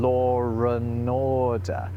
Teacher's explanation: if you say law and order, you end up sort of putting a r sound in the middle of there, even though there isn't one. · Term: intrusive r